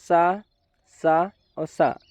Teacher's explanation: जो पहला सा है वह तालव्य है दूसरा सा मूर्धन्य और तीसरा सा दंत है